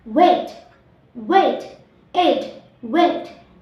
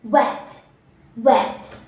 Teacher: T. Voiceless, alveolar, and plosive. Difference between the first word and the second word are: the first word we can say wait, wait, eat, wait, and the second word we say wet, wet.